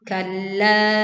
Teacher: Tekan lam bertasydid lalu panjangkan la 4 sampai 5 harokat.